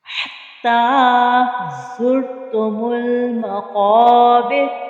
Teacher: قوف جو ہے یہ موٹے حروف میں سے ہے، حروف مستعلیہ میں سے ہے، اسے پر یعنی موٹا پڑھیں گے۔